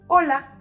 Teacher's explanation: h doesn't make a sound in Spanish